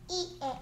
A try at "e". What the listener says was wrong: 아. E에 아가 아니고 어. 힘 빠져야지 왜 이렇게 세게 얘기해. E에 어.